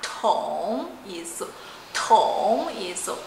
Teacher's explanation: Tong, a letra T tem que soprar